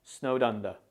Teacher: pay attention to the stress on the word under. It's stressed on the first syllable or sound, so you should say snowed under. · It's stressed on the first syllable or sound, so you should say snowed under. The D in snowed is often pronounced very subtly, so it will sound a bit like snowed under.